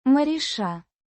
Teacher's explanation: Pronounced roughly as MARISHA. with the stress on the second syllable.